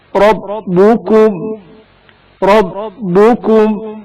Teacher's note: رائے مفتوح زبر والے را کو تفخیم کے ساتھ پڑھا جائے گا